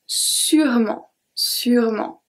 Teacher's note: don't forget that we do not pronounce the E in the middle